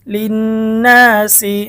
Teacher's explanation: লাম নুন জের লিন নুন আলিফ জবর না লিন ওয়াজিব গুন্না হরকতের পরে নুনের মধ্যে তাসদীদ হয়েছে গুন্না করে পড়তে হবে এটাকে ওয়াজিব গুন্না বলে